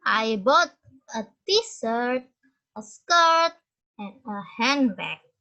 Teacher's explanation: Jadi yang terakhir yang di belakang fall intonation. Intonationnya menurun. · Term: rise fall intonation